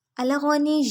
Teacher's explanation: غین حلق کے پہلے حصے سے ادا ہوگا، موٹا پڑیں گے، نون کی زیر کو یا سے ملائیں گے، سختی سے تشدید ہے، یا کی پیش لمبی نہیں ہوگی۔